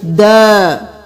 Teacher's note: الف مدہ ہے، اس کو 1 الف کے برابر کھینچیں گے